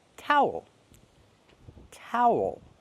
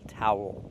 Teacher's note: Make the ow sound, plus the dark L, towel.